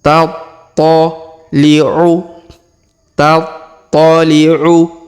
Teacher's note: Huruf to berharokat tasdid, maka kita tahan dan kita tekan.